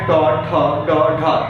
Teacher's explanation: कहते हैं ट ठ ड ढ, तेजी से झटका देती है मूर्धा को, इसलिए इन्हें ओज वर्ण कहा जाता है